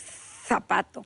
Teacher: los españoles crearon una Z y esa Z está entre los dientes